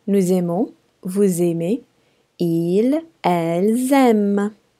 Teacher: all of the final S's have liaison between the S and the first vowel, okay? That means the S sounds like Z, like zebra.